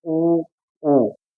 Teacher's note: जिन स्वरों के उच्चारण में ओष्ठ गोल हो रहे हैं, उनकी आकृति गोल हो रही है, अर्थात वृत्ताकार हो रही है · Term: वृत्ताकार स्वर